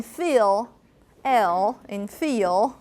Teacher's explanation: So we call velarization. Okay, so in dark L, you have that tip of your tongue approaching the alveolar ridge, but you're also having a secondary. · you're actually moving the back of your tongue toward your velum to make it velarized. Okay, so it's called dark L.